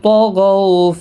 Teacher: الذی ذی یا مدہ ہے، تو حروف مستعلیہ ہے، غین بھی مستعلیہ ہے، ان کو موٹا پڑھنا ہے